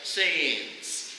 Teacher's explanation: And he said it kind of sounds like signs, but you actually pronounce both vowels